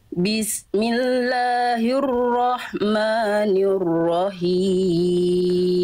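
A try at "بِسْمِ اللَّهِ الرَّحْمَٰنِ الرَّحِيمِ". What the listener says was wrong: Tinggal hak kecil kasrohnya. Him. Berbisik dari tengah tenggorokan. Him. Bunda berarti hak kecilnya udah bisa, cuman pada saat masuk ke dalam ayat dia nggak sempurna, kurang pol.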